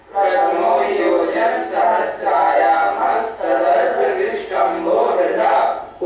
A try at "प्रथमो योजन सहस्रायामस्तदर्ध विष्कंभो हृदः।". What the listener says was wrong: उच्चारण फिर एक बार देखें। प्रथमो योजन सहस्राया, सहस्राया नहीं, सहस्रायामस्तदर्ध विष्कंभो हृदः।